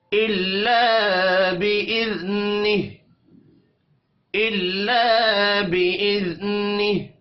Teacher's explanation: इल्ला अलिफ मद्दा है, एक अलिफ के बराबर खींच कर पढ़ेंगे।